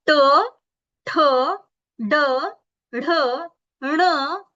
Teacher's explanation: मूर्धन्य म्हणजे मूर्धा, तिथून त्याचा उच्चार होतो.